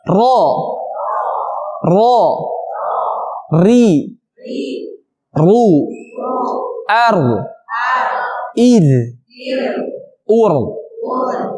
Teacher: Ujung lisan nempel ke langit-langit, tepatnya ke gusi gigi seri atas. Bukan gusi yang luas semuanya, kan tetapi gusi bagian gigi serinya. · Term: makhraj ro